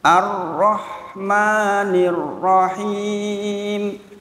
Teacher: Ro berharokat fathah dibaca tafkhim, bukan tarkik.